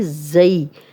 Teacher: زا سیٹی والا ہے اور یہ یا لین بھی ہے